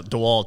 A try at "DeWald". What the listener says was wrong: DeWald. Not DeWalt. DeWald. Not DeWalt Tools, DeWald. You said T though.